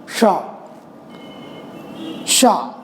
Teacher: शा को बोलने के लिए आपको जीभ को सबसे पीछे, तालु के पिछले भाग में लगाना पड़ता है